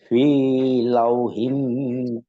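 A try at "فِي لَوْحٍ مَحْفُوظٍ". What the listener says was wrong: বেশি না, আপনার টানটা বেশি হয়ে যায়। একালিফটা এমন, এটা সবার জন্য একরকমই থাকবে। এটা কখনোই বেশিও হবে না, কমও না। ফি লাউ, এদের একটু একটা ধাক্কা দিচ্ছে হালকা। ফি লাউ একটু কি হয় একালিফ, এটা বেশি কখনো হয় না।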